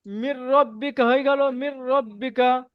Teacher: নুন সাকিনের পরে র এসছে, একে বেলা গুন্নায় তাড়াতাড়ি পড়তে হবে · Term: বেলা গুণা